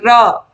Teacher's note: मुख द्वार जीभ की नोक से शीघ्र ही बंद होता है और 2-3 बार खुलता है, जैसे कि र। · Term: लुंठित